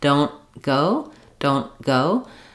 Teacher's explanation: a phrase like don't go our most typical pattern is to you won't really hear the T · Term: unreleased